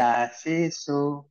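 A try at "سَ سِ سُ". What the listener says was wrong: sa-nya agak cedal ya Pak ya di ujung gigi. Ujung lidah ke ujung gigi.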